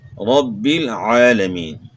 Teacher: عین کی آواز گلے کے درمیان سے آپ نے نکالنی ہے، عالمین نہیں پڑھنا، پڑھیں گے تو پھر حمزے کی آواز ہے، حرف چینج ہو جائے گا، رب العالمین، رب العالمین، عین کے ساتھ، رب العالمین۔